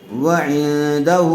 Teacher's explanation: غنّے کے ساتھ اخفا ہوگا